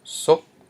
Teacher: Okay, we have a high consonant s plus a short vowel o, and then a dead syllable p, which equals a rising tone